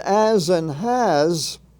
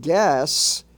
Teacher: the S is pronounced in its soft sound its soft form almost like Z